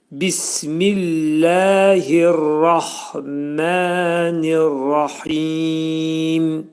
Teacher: Burada hə hərfi incə oxunacaq və ra hərfi qalın oxunacaq. Radan sonra olan hə hərfində ani tormuzlanma verəcəyik. · Hə hərfi boğazın ortasından çıxarılacaq və dörd hərəkə miqdarında uzadılacaq. · Mə iki səs qədər qaldırılacaq.